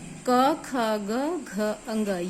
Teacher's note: जैसे क, ख, ग, घ, अंग, ये 5 व्यंजन कंठ से बोले जाते हैं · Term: क वर्ग